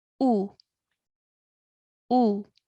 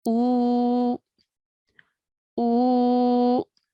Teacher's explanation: And now since this is a waw mud, we will stretch our sound for 2 counts now. Okay, so whereas before the alif with the dhamma was just 1 count, now it will be pronounced for 2 counts because of the waw mud